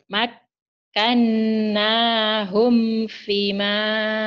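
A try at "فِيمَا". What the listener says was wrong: Fima panjang. Fima panjang. Udah pinter tuh, Bu.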